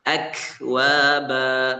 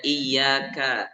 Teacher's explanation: Memang kuat hamsnya ketika sukun akwaba tapi ketika berharakat itu lemah.